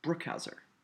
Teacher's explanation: When I say the word Brook, the syllable Brook, it's said with a little more force than the other two syllables